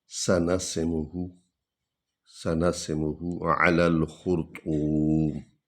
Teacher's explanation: سیٹی کی آواز نکلے گی اور میم ہونٹوں سے ادا ہوتی ہے، اور یہ ہا جو ہے یہ سینے سے ادا ہوتی ہے.